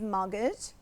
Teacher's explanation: we don't pronounce the T. It's a silent letter.